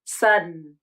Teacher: Omit the vowel completely, and then move from the unreleased D to a syllabic N consonant. · Instead of saying din in the final syllable, native speakers may use an unreleased D.